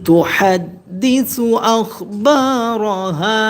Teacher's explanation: হা জবর হা, এখানে কোনো পরিবর্তন হবে না, হা এক আলিফ টান হবে।